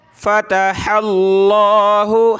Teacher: लफ्ज़ अल्लाह से पहले ज़बर है, हा पे तो मोटा करेंगे